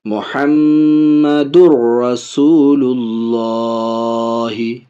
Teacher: دال کو را میں ملا رہا ہے لیکن ناک میں آواز نہیں جا رہی ہے، غنہ نہیں ہو رہا ہے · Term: ادغام